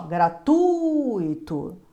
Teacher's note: O U é mais forte, ó. Gratuito. O U é a vogal e o I é a semivogal de gratuito.